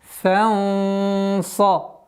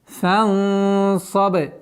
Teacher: С фатхи над буквой фа мы уходим на ихфа, твердый ихфа. В размере двух огласовок удерживаем. Фанса. И ба у нас мягкий звук, но с правилом калкаля.